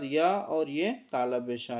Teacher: और उसके बाद या और ये तालव्य शा, ये दोनों जो हैं तालु से बोले जाते हैं, इसलिए ये सारे के सारे जो हो गए वो तालव्य वर्ण हो गए।